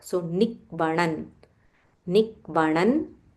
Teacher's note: So here there is a half k followed by v.